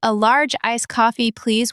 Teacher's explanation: with please super strong, it sounds like you're annoyed and the barista forgot your order.